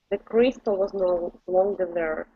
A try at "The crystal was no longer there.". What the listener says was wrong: Okay, instead of okay, keep it down. Push the tongue down a little bit.